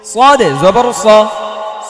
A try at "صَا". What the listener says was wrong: সানা স স মোটা হবে।